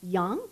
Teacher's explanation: it's the second tone it goes up